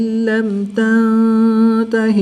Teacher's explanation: میم ساکن کے بعد تا حرف تا با اور میم کے علاوہ ہے تو یہاں پر اظہار شفوی ہوگا